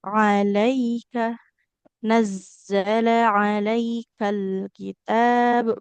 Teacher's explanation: huruf ainnya di tengah tenggorokan